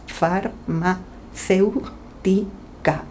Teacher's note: La palabra farmacéutica tiene cinco sílabas y el acento recae en la antepenúltima sílaba, ceu. Por tanto, es una palabra esdrújula y como tal, la regla dice que todas las palabras esdrújulas llevan tilde. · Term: acento de intensidad